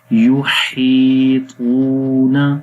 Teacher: وما خلفہم ولا، لام کو بھی لمبا کریں گے، الف مدہ ہے اس وجہ سے. یحیطون، ہا کو لمبا کریں گے، یا مدہ کی وجہ سے